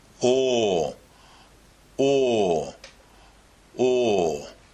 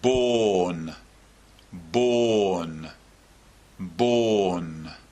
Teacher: we make this sound in a similar way to all but it's much longer and much lower as well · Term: or sound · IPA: ɔː